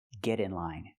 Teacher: We hear the pronunciation of T change to a fast D because it's between vowels.